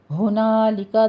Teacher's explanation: ہا موٹا آپ نے پڑھنا ہے، اقص حلق سے ادا کرنا ہے